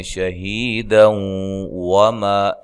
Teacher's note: جب ملائیں گے تو یہ نون تنوین کا ادغام مع الغنہ ہوگا